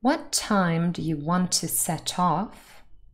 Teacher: the verb and the particle are both stressed and set off but the off the particle is slightly louder than the verb